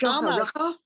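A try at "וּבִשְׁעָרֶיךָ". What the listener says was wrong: Almost. First of all, it's uv. Uvish arecha.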